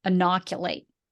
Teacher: Here's the pronunciation for it, broken up into, it's got 4 syllables, and you would put the emphasis on that second syllable